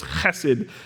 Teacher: In Hebrew, it's kind of guttural and deep. It's like you're clearing your throat.